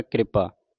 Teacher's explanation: ਕ੍ਰਿਪਾ ਪੈਰ ਵਿਚ ਰਾਰਾ ਜਲਦੀ ਦੇ ਨਾਲ ਪੜਨਾ